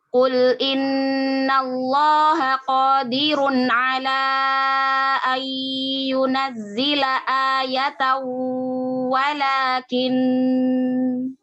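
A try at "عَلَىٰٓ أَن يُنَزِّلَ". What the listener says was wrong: Ustazah, nun mati ketemu ya-nya kurang guna Ustazah. Ala ai itu kurang. Gini. Ala ai tuh. Ai yunazzila.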